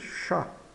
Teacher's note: Chat. Aqui o T, o CH de chat tem som de X, como em português, e o T final é mudo